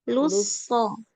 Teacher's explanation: Lu-nya tipis dulu. Lu-nya tipis, nanti tebal pas masuk sod.